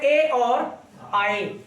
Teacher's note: कंठ तालब से बेटा कौन सा निकलता है, कंठ तालब से निकलता है ए और आए